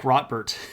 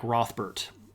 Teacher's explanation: So it would be more like Rothbert, is probably how we would pronounce that. But the TH makes a T sound in the particular dialect that they're using.